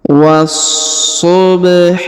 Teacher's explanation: huruf wa langsung disambung masuk ke huruf SH yang berharakat tasdid ya ditahan dan ditekan